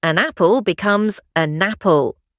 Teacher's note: This happens because of 3 linguistic thieves that steal the clarity of words. Linking, we carry the end of one word over to the start of the next